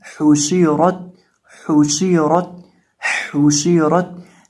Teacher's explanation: रॉ के ऊपर ज़बर है तो इसको मोटा करेंगे और ता को बारीक पढ़ेंगे। तो इसकी आवाज़ आएगी हुशीरत, हुशीरत, हुशीरत। · अब ये जो हमारे पास लफ्ज़ है इसके अंदर हमारे पास है पहले नंबर पे हा पे शीन और रॉ है और आखिर पे ता है। ये जो हा है इसको पढ़ते वक्त भी हम अपने होंठों को गोल करेंगे क्योंकि इसके ऊपर पेश है, और शीन के नीचे देर है, और शीन के पढ़ने का तरीकाकार है ज़ुबान का वस्त जब ऊपर मद्दे मुकाबिल तालु से लगता है तो शीन अदा होता है।